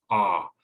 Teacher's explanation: Like the short A sound, the jaw needs to really drop, ah. But instead of being near the front of the mouth, it's further back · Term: short O sound